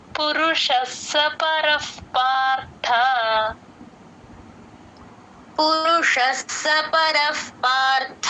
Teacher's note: Join చేసి చెప్పాలి పురుషస్స పరఫ్ పర పక్కన విసర్గ ఎఫ్ లాగా చెప్తాము. ప ముందు ఎప్పుడు విసర్గ వచ్చినా ఎఫ్ సౌండ్